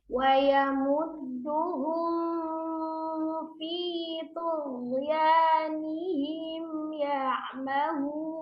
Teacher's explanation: huruf fa-nya kan sama-sama huruf bibir ya, jadi safatain